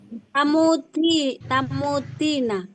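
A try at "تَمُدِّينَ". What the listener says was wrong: Ya panjang. Pakai ya. Tamuddina.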